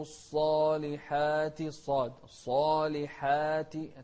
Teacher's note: التفخيم في الصاد والترقيق في الصالحات